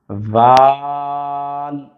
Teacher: ذال جب ہم پڑھیں گے تو ہمارے دونوں دانتوں سے باہر ہم اپنی زبان کو نکالیں گے